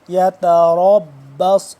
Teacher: را موٹا صاد بھی موٹا، سین سے جدا کر کے پڑھیں گے۔